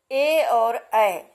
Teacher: ए और ऐ स्वरों का उच्चारण करने में कंठ और तालु दोनों स्थानों का प्रयोग होता है। दोनों उच्चारण स्थानों के मेल होने के कारण दोनों स्वरों को कंठ तालव्य वर्ण कहा जाता है।